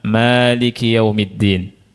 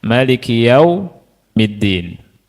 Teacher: Yang pertama dengan isbatu alif artinya memanjangkan ma maliki yaumiddin ya. Yang kedua dengan memendekkannya